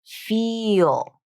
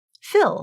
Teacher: Feel and fill are two separate words in English. However, in spoken English, especially when speaking quickly, native speakers will reduce the word feel to fill